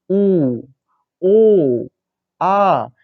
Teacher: व्रतमुखी को जब हम बोल रहे हैं यहाँ पर तो हमारे माउथ पे एक सर्कल बन जाएगा